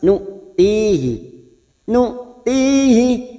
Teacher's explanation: nu hamzah sukun, nu jangan samakan dengan ain, hamzah sukun tegas. Nu'tihi, nu'tihi, kasrah diikuti sukun 2 harakat.